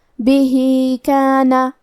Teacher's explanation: کلمت بھی کے آخری میں ہا کے نیچے کھڑی زیر ہے، تو یہاں حکم ہے مد صلہ صغرا، ہم اپنی آواز 2 مد کے برابر لمبی کریں گے